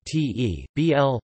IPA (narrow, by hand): ˈtʰeɪ.bl̩